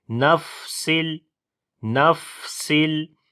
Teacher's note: تنوین کے بعد لام آ گیا تو ادغام کریں گے بغیر غنے کے